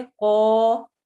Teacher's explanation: قاف موٹے حروف میں سے ہے اس لیے ہم قا موٹا پڑھیں گے